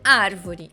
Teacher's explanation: então é árvore é a anti penúltima sílaba mais forte e agudo porque é uma pronúncia aberta e não fechada